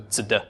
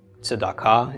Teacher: sort of a little pause between the tzadi and the dalet